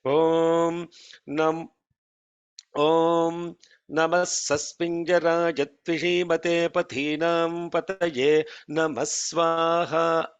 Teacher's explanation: A good place to take a break is pataye because A is a longer vowel